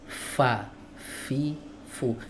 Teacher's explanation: Huruf fa itu pun yang dilibatkan hanya bibir bawah.